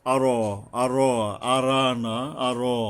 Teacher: আর আই, এই যে হামজা আছে এখানে শক্তভাবে হলকের গোড়ার থেকে, আর, আর, আরানা, আর, কারণ রটা হরফে ইস্তিওয়ালা, এটা মোটা করে পড়তে হয়